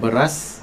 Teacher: Yang beras dia adalah vokal E pepet, yang mana kita maklum E pepet dieja dengan tidak dilambangkan dengan huruf alif.